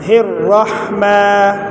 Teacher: را کو موٹا کر کے پڑھیں گے، اور ہا کو گلے کے شروع سے ادا کریں گے